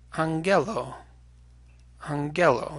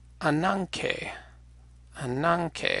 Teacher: a gamma that's nasalized before a palatal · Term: nasalized gamma